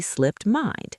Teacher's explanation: Slipped drops the t sound at the end and becomes slip.